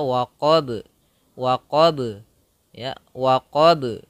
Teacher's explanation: salah satu sifat qalqalahnya, yaitu memantul huruf ba-nya.